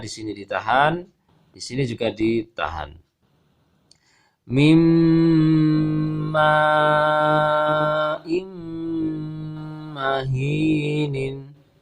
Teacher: suara tanwinnya hilang, berubah menjadi lebur ke huruf mim. Kemudian disertai dengan gunnah yang ditahan 2 harokat ataupun 3 harokat